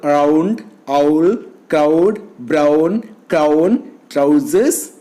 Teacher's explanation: The lips are neutral in the beginning but are rounded towards the end because U is a rounded vowel. Ow is a glide from the back open position and to the closed position. The lips are neutral in the beginning and rounded towards the end.